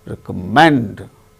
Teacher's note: recommend third syllable gain stress